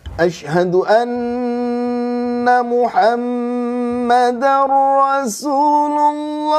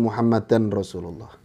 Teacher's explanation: ya kalau tanwin bertemu ro itu ada hukum namanya idgham bilagunah idgham itu melebur jadi tanwinnya hilang langsung masuk ke ro itu sudah kaidah ilmu tajwid ya Jadi bukan muhammad dan rasulullah